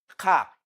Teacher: Ka is a voiceless velar plosive.